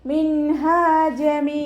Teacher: രണ്ടു കൗണ്ട് നീട്ടികൊടുക്കുക മിൻഹജമ നൂൻ സാക്കിനക്ക് ശേഷം ഇഹാറിന്റെ അക്ഷമായിട്ടുള്ള ഹ വന്നു നൂൻ സാക്കിനയെ വ്യക്തമാക്കി മണിക്കാതെ ഉച്ചരിച്ചു കൊടുക്കുക അവിടെ മിൻഹ എന്ന് പറയരുത് മിൻഹജമ അതുപോലെ ഉച്ചരിക്കുട്ടോ മീമിന്റെ കൂടെ യാമദ് വന്നു